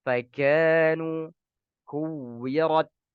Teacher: Berlebihan dalam membaca hamas pada huruf kaf